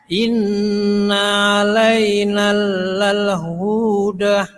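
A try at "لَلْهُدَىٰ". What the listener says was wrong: Hunya pendek. Lal huda. Iya, kepanjangan. Terlalu panjang tadi.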